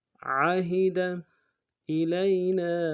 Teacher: یا لین بغیر کھینچے پڑیں گے